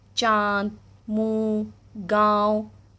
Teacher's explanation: इसका उच्चारण करते समय हवा नाक और मुंह दोनों से निकलती है, उसे अनुनासिक कहते हैं।